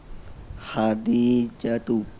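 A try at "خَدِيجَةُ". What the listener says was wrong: Kha atau ha? Kha. Ulang sekali lagi.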